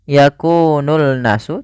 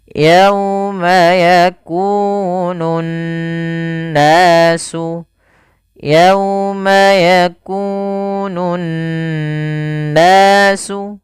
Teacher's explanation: alif lam yang kita tuliskan tapi kita tidak baca huruf lamnya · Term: alif lam syamsiyah